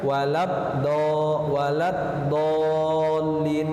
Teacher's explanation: salah satu ciri atau sifat dari huruf dot yaitu istitalah, yaitu meminta panjang